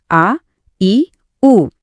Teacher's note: ज्यांना थोडा जास्त वेळ लागतो ते झाले दीर्घ स्वर